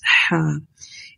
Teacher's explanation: دس ہا comes from the middle part of the throat, sound is ہا۔